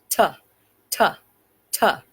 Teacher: The first letter, T, is a stop, disrupts airflow, quick, sharp, staccato.